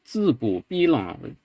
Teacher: And then you have this sondi phrase 字 不 必 浪, where the way it's transcribed here in the book is 字 不 逼 浪 as one single phrase, but you can hear that what the speaker does is 字 不 逼 浪 with low second syllable 不 and low second syllable 浪, which actually I think is interpreted as two separate 1x chains, or two separate chains rather.